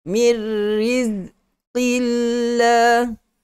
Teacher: Lafzul jalalah pada huruf lam kena nipis